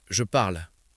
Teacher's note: dans une conversation rapide, le « e » final peut presque disparaître et ça devient « je parle »